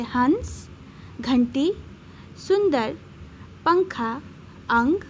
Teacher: इसे बोलने में नाक से ध्वनि निकलती है। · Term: अनुस्वार